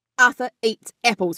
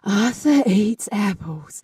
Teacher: You don't do a glottal onset, a hard glottal onset of the sound. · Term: breathy onset